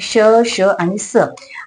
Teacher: फेकली जाते इतकी जोरात बाहेर फेकली जाते की काहीशी उष्णता किंवा त्या हवेच घर्षण होतं दातांवर घर्षण होतं आणि ती हवा बाहेर फेकली जाते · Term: उष्मे किंवा घर्षक